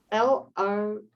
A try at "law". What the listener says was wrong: No, LAW. It's not the lore of love, it's the law of love.